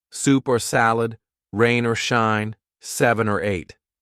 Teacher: the word or gets reduced gets shortened gets linked to a word before or a word after